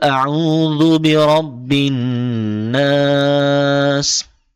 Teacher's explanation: হবে নুনে মিমে তাসদিদ হলে গুন্না করতে হয় এখানে আমরা দেখছি নুনে তাসদিদ হয়েছে এক আলিফ পরিমাণ গুন্না করতে হবে